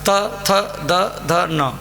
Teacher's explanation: दन्त अक्षर त, थ, दा, ध, न। जब आपकी जीभ आपके दांतों को छूती है, तो ये पांच अक्षर Ta, Tha, Da, Dh , Na उत्पन्न होंगे।